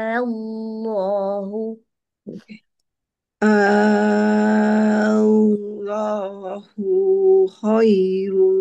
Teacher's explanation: A ni nipis a. Jadi kena senyum a sepanjang enam harakat. Senyum a. Hujung sekali tu tolakkan suara.